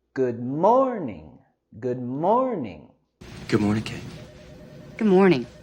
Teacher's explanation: Tenemos el sonido vocálico en good, good, y queremos subir la entonación en morning